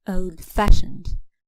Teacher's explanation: the compound adjectives the stress is on the second part